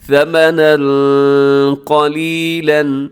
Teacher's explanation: ثمنا قلیلا، ثمنا میں تنوین ہے اور یعنی آخر میں دو زبر کی تنوین ہے، اس کے بعد قلیلا کے شروع میں قاف ہے جو کہ حروف اخفا میں شامل ہے، اب یہاں پر اخفا کیجیے گا